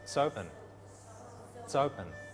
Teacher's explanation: There's no break between the words or the syllables, you know? The words go together.